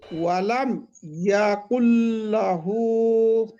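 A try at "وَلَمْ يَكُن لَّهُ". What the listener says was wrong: শোনেন, আপনারা একটু ভুলেছে, এই ইয়াটা টান হয়ে যাচ্ছে, ইয়াকুল্লাহু, ইয়া টান মানে কি আমি বলেছিলাম জানেন তো? আওয়াজটাকে লম্বা করা, দেখেন, আ আ আ আ, এটা আওয়াজটা লম্বা করছি না, শুধুমাত্র মুখ থেকে আওয়াজটা বার করছি।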